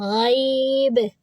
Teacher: جب ہم یہاں پر وقف کریں گے تو با کو روکیں گے جزم کے ساتھ، غیب، قلقلہ کرتے ہوئے